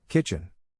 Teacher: the accent is in the first syllable, corresponding to kitch